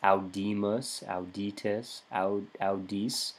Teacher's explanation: fourth conjugation has a long I in the second person and first person plural